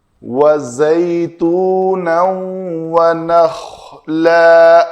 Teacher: وَزَيْتُونًا وَنَخْلًا، دونوں دانت آپس میں جڑیں گے نہیں تو وہ زال کی مشابت ہو جائے گی، زال ہو جائے گا۔ وَزَيْتُونًا وَنَخْلًا، خا کو پر کرنا ہے